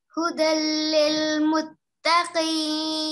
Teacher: We are merging the sound of noon here into the following la mushaddad. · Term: complete idgham